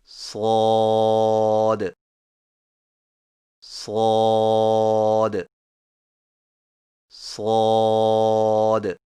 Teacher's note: صاد کی ادائیگی میں زبان کی نوک کو سامنے والے نیچے کے دو دانتوں کے کناروں سے مضبوطی سے لگا کر اور زبان کے پچھلے حصے کو تالو کی طرف بلند کرتے ہوئے موٹی اور سیٹی جیسی آواز میں پڑھیں، یعنی صاد صاد صاد۔